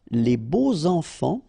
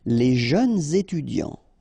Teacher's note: you make the liaison between beau, so adjective, and enfant